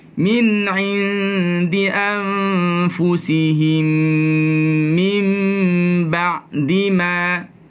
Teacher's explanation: Masukkan ke hidung. Anfu juga ke hidung. Jangan pergi ke mulut sahaja. Okay? Mesti naik ke hidung.